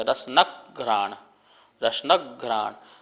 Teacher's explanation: जो घा का जो साउंड है नाक के साथ थोड़ा सा होगा तो और भी शुद्ध हो जाएगा